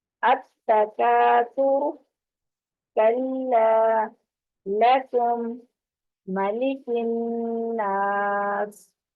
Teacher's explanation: ساکن کاف جو باریک کاف ہے، اس کو ساکن حالت میں جب ہو تو اس وقت ہم کھ کی آواز کے ساتھ اس کو ادا کرتے ہیں. ہلکی سی آواز اس کی، یعنی اس کاف کے ساتھ اگر دو چشمی ہاں لگا دی جائے تو کھ، جیسے کھانا تھا وہ والا کھ بن جاتا ہے.